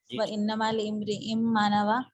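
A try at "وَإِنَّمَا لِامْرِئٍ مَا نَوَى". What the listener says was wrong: حمزہ نہیں پڑھیں گے، وانما لامرئ ما نوى۔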